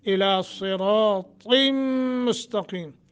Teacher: صاد را طا تینوں موٹے کرنے ہیں